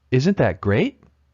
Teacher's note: the final sentence here is a yes or no question so we use Rising intonation